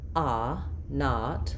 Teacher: So, when I'm saying a not, my mouth is my tongue is down, my mouth is open, there's no rounding of my lips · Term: ah vowel